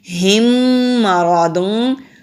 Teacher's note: میم کے اوپر تشدید ہے تو غنہ بھی کریں گے، تو ادغام شفوی کہلائے گا۔